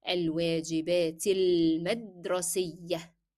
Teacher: I'm skipping the pronunciation of alif and directly from كسرة to lam.